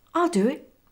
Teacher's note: notice the W linking between do and it